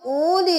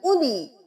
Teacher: ये वाउ बिल्कुल खाली है, इसका यहाँ पे कोई काम नहीं है।